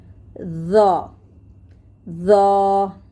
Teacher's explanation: ज ऊपर के दांत में लग के थोड़ा सा बाहर